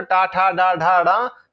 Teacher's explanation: टा, ठा, डा, ढा, डा, ऋषि, रासा, ये मूर्धन से बोले जाते हैं